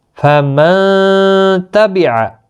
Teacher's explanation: اب اخفا کرنا ہے آپ نے، یہاں پر گنہ کے ساتھ پڑھا جائے گا۔